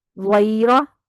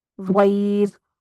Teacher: द्वैरा में पुर है, द्वैर में बारीक हो गई